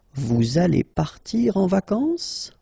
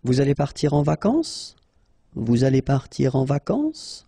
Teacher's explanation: You should raise your voice a little bit at the end just to inform the person that it's a question